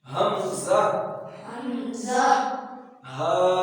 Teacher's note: یہ جو ہا پڑھا ہے نا یہ حمزہ کے شروع میں یہی ہا ہے، یہ جو ہا پڑھا ہے نا آپ نے پہلا حروف ہلکی میں سے جو پہلے 2 حروف ہیں جو حلق کے سب سے نیچے والے حصے سے ادا ہوتے ہیں اس جگہ سے حمزہ ہا اس طرح نہیں کہا باریک نہیں، موٹی تھوڑی آواز نکالی ہا ہاں حمزہ ہا۔